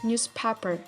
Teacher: z becomes s when followed by p or t sound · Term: regressive assimilation